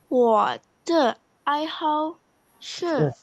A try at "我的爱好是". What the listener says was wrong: hao-nya salah. nadanya. Ai hao.